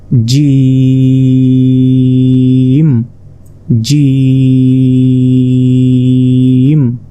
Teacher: হবে অর্থাৎ অর্থাৎ চার সেকেন্ড আপনাকে টেনে পড়তে হবে জিম জিম জিমটি উচ্চারণ হবে জিহবার মধ্যভাগ তার বরাবর ঠিক উপরে তালুর সঙ্গে লাগিয়ে জিম জিম এরপর দেখুন জিমের মতই দেখতে কিন্তু এটার মাঝখানে কোন